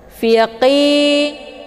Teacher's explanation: ya sukun sebelumnya harokat kisra dinamakan dengan mad tabi'i zahiri, dibaca panjang 2 harokat. Untuk qaf bacaannya adalah ditebalkan, makhrajnya di pangkal lidah.